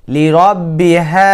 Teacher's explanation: হলকের শুরু হতে এই হা উচ্চারণ হয়